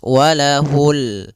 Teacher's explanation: Di sini ada bacaan alif lam pada lafal ini adalah lafal bacaan alif lam qamariah. Yaitu alif lam yang ditulis dan dibaca yaitu suara lamnya terbaca dengan jelas